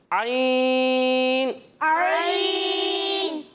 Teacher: جب ہم عین کی ادائیگی کریں گے نا تو اسے ہم حلق کے درمیانے حصے سے پڑھیں گے